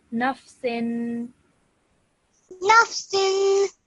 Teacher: That noon sound at the end, just carry on for around 2 seconds.